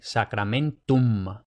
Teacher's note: M se lee m como en sacramentum, pero sí que tiene la complicación o potencial complicación de que también hay que leerla al final de la palabra. Entonces, los hispanohablantes tendemos a pronunciar la m al final de la palabra como una n, pero no, tiene que ser una m, sacramentum.